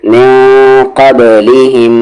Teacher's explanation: نون ساکن کے بعد قاف ہے اخفا لیٹر ہے، من نہیں ہوگا میں ہوگا، میں با پر یہاں پر سکون ہے تو قلقلہ کریں گے